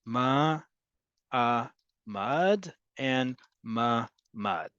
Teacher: Even though there is another syllable in mamad, you can hear how I say it. That ayin just sort of becomes elided into the rest of it. But again, context will help you here.